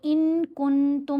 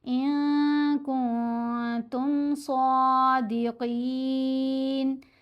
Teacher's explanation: تو ان کن تم نہیں پڑھیں گے، ان ناک میں بھی چھپایا، ساتھ غنہ خفیف بھی ہو رہا ہے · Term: اخفا